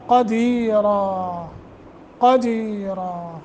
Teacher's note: قاف کو موٹا، دی حروف مدہ ہے تھوڑا لمبا کریں گے، را موٹا کریں گے، نون تنوین کو ختم کر دیں گے، الف پہ رکیں گے۔